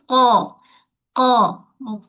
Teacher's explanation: Qaf ni huruf yang tebal. Tapi dia infitah. Bahagian tengah lidah tu dia mendatar je. Dia tak mengepung. Okey? Dia tak mengepung. · Dia tak mengepung. Yang terangkat bahagian pangkal lidah. Bahagian tengah tidak terangkat. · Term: huruf qaf